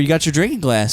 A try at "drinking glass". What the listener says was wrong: It's DR. It's drink. No, you saying drink with a J. It's D. It's drink.